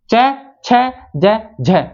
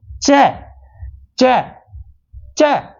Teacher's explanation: वे व्यंजन जिनके उच्चारण में उच्चारण का समय अपेक्षाकृत अधिक होता है और उच्चारण के बाद वाला भाग संघर्षी हो जाता है यानी कि घर्षण पैदा हो जाता है तो कौन से स्पर्श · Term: स्पर्श संघर्षी व्यंजन